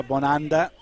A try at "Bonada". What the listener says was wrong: Bonada. No N in there. Is there an N? Isn't it an A?